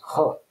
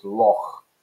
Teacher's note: as if you're clearing your throat and about to spit on the pavement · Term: gh sound